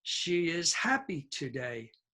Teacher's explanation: Now remember, she is low. It's a pronoun. Is, the be verb, is low. Happy is an adjective. It's high.